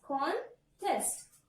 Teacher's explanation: So, first part is called syllable number 1 and second part is called syllable number 2. Because it's noun, we have to stress on syllable number 1.